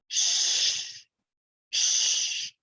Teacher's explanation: Tongue pulled back on the roof of the mouth. We have shh, shh, unvoiced.